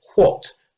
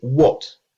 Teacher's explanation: Most English speakers don’t say /ʍɒt/, they say /wɒt/.